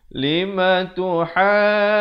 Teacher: Lima tuhajjuna dibaca di sini 4 atau 5 harakat.